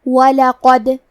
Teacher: کلمت وَلَقَدْ میں حرف القاف کو موٹی آواز میں پڑھیں گے اور کیونکہ دال پہ جزم ہے تو ہمیں دال کو قلقلہ سے پڑھنا ہے